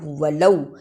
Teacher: ولو یہ حرف لین ہے، اسے جلدی پڑھنا ہے